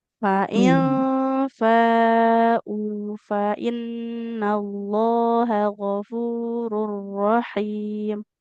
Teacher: hamzahnya domah ketemu wau harus panjang ibu